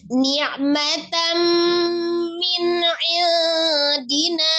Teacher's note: Nun sukun atau tanwin bertemu dengan huruf mim, dihukumi idgham bi gunnah ya, jadi dilebur disertai dengan gunnah. Min indi. Nun sukun bertemu dengan huruf ain, hukumnya adalah izhar, dibaca dengan jelas ya.